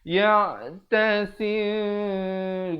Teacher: Ikhfa syafawi bacanya kadar dua harakat. Mim yang bibir itu hampir bersentuhan saja dua harakat.